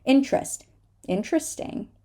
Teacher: remember the T and the r together are going to give us the Cho sound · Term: ch sound